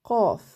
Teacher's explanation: C'est une des lettres gutturales qui se prononce en fait beaucoup avec la gorge. On la sent au niveau de la gorge.